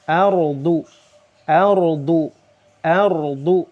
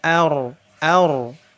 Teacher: Tafkhim. Ra sukun sebelumnya fathah harus dibaca tebal.